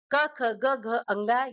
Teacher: क ख ग घ अंगा ये चारों क्या है कंठ ध्वनियां